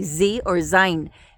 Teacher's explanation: a z makes a voiced sound that means we use our voice when we say the z